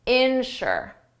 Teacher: Insure the stress is on the first syllable.